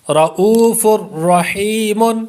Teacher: غنہ اس لیے نہیں ہوگا کہ تنوین کے بعد را ہے، را اور لام میں غنہ نہیں ہوتا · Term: ادغام